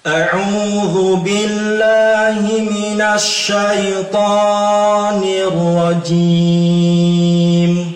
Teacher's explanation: Kita mendengar di situ ada bacaan mad asli yang terlalu panjang dalam huruf ta.